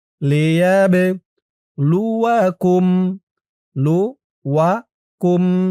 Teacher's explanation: বাটা কলকলার হরফ ধাক্কা দিয়ে পড়তে হবে